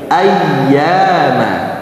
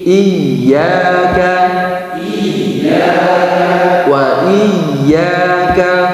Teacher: Jadi kalau ada ya bertasydid ditekannya kuat, jangan samar-samar.